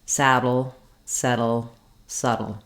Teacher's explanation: So even though we have very different spelling in these words, some have the letter D and some have the letter T, all of these words have the same ending syllable, which is a flap sound and a syllabic L that sounds like dull. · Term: flap and syllabic L